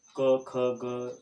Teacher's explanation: कंठ के सहयोग से क, ख, ग, घ, ड़, ड आदि कंठ ध्वनियाँ निर्मित होती है। यानी कि कंठ के हम जब क, ख, ग इस ध्वनियों का उच्चारण करते हैं तो वह कंठ से निर्मित होते हैं।